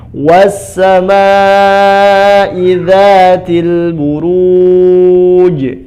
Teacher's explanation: Idza danya 2 harakat, burujnya panjang, jimnya diqalqalahkan.